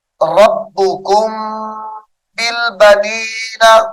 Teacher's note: ربکم کو با کے ساتھ جب ملائیں گے تو یہاں پر غنہ کریں گے ربکم بالبنین اخفاء شفوی ہوگا ربکم بالبنین واتخذ من الملائکۃ من